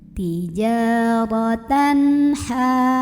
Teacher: Kemudian ada idhar halqi karena ada tanwin fathah yang ketemu sama huruf tenggorokan yaitu huruf ha. Maka baca tanwinnya jelas, bunyi an dan tidak ditahan.